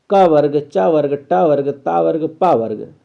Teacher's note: का कंठ से है, चा ताल से है, टा मूर्धा से है, ता दंत से है और पा ओष्ठ से है